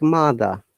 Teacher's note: the r okay now i'm going to give examples why and we don't pronounce r at all like mother have you watched the movie called harry potter any of you